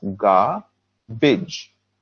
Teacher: 2 parts, garbage. And the stress here is on the first part.